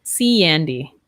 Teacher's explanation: when we have an e and an a sound yeah so we link with the ya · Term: linking vowel sounds